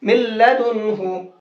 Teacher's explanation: ये रहा नून साकिन पहली शर्त, नून साकिन के बाद में ये आ गया लाम दूसरी शर्त। तो जब नून साकिन के बाद में लाम आया तो नून को कर देंगे खत्म। क्यों, क्योंकि नून हो गया लाम में मिक्स, इदगाम हो गया।